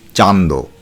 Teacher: এই উপভাষায় নাসিক্য ব্যঞ্জনধ্বনির লোপ হয় না